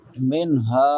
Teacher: نون ساکن کے بعد حروف حلقی میں سے ہا ہے تو یہاں پہ اظہار ہوگا